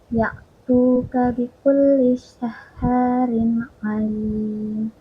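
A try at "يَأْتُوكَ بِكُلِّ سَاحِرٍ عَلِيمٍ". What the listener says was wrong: Tadi sih ya-nya seperti terdengar seperti ain ya. Ya tuh ka, ya tuh ka. saharin Nah ini tadi kan tanwin atau kasroh taim bertemu ain ya. Jadi dibaca jelas ke tanwinnya karena hukumnya adalah izhar.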